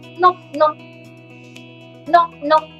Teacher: we are going to remove the k sound at the end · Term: sudden sound